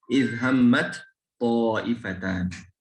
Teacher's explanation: maka huruf ta harus diidghamkan ke huruf to, berubah menjadi to. Idhammat, langsung to tebal.